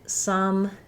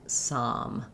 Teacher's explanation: the tongue is resting in the same place but my jaw is more open for the ah sound than the uh sound.